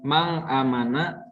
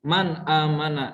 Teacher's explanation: nunnya dibaca jelas, bukan mang amana tapi man amana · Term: izhar